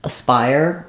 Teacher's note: Spire is stressed and we only have two syllables